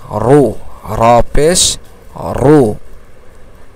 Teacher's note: র বলতে গেলে জিহ্বার মাথা তার উল্টা পিঠকে কি করতে হয়? উপরের তালুর সাথে লাগায়ে পড়তে হয়।